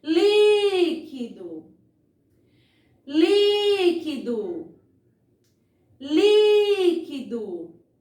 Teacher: eu demorei bem mais na sílaba li e é justamente a sílaba acentuada, certo? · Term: sílaba tônica